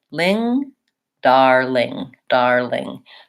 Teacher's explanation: I would have my are syllable and then a light front L starting the new syllable so to learn how to say it just say the ling-ling